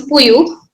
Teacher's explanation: wherever there is ra in standard variety of Malayalam, it becomes ya in Mappila variety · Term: palatal approximant